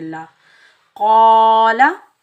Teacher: काफ के ऊपर ज़बर, आगे अलिफ खाली से पहले काफ के ऊपर ज़बर है, ये अलिफ मद्दा है, इसको हम एक अलिफ की मिकदार खींच कर अदा करेंगे। क़ा, लाम के ऊपर ज़बर बगैर खींचे पढ़ेंगे